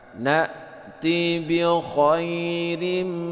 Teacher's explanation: Na'ti bi khairim, nah ini baris kasratain bertemu dengan mim, ini adalah idgham bi gunnah dibaca berdengung 2 harokat